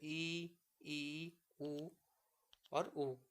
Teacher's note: समवृत्त स्वर जो होते हैं इनके उच्चारण में मुंह द्वार जो संकरा हो जाता है